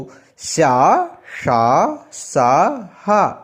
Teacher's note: ఊష్మాలు గాలిని బయటికి ఊదుతూ పలికే అక్షరాలు